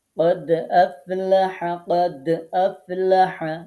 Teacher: এই যে قد দালে আমরা কলকলা করব, তখন একটু লাইট কলকলা করলেই হবে।